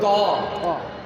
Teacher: تو کی ادائیگی زبان کو اوپر تالو کے ساتھ سختی سے لگانا ہے